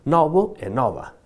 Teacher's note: outra metade pronunciaba aberto tanto o masculino como o feminino